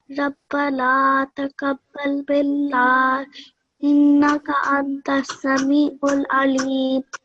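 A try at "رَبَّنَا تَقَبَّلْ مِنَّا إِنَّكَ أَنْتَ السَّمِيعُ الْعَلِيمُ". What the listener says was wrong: Well done.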